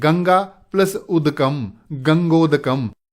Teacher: इसी प्रकार यदि आ के बाद ह्रस्व उ आए तो भी ओ बनेगा। जैसे गंगा प्लस उदकम।